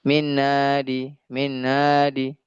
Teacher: Jadi seperti dengaran H-nya hilang. Karena H dia memiliki sifat yang paling lemah di antara semua huruf hijaiyah.